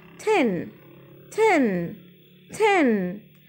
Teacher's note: كأنها تي مكسورة بس كسرة خفيفة ما بقولش تان ما بقولش تين